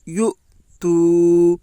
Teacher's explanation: حمزہ کے اوپر جزم ہے، جزم والے حرف کو پیچھے والے حرف سے ملا کر پڑھیں۔ حمزہ ساکنہ کے پڑھنے میں جھٹکا ہوتا ہے۔